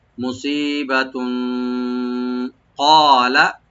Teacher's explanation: কফটাকে deep করে একালে টানবেন, লামে কোনো টান নাই।